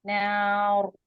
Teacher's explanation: نار جب وہ روکیں گے تو رو کو ہیوی کریں گے